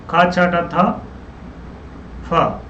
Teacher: महाप्राण मतलब होता है जिसका अधिक, ज्यादा वायु निकले, प्राण का अर्थ हुआ हो, वायु का अर्थ हुआ हो, बोलने में ताकत ज्यादा लगी हो, भीतर से अधिक वायु को लगाया हो कि जब चिल्लाते हैं तो पूरी ताकत लगाते हैं।